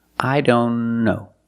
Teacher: Link the N with the other N.